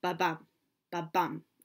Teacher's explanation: So we call that a rising meter because it gets more stressed as it goes forward.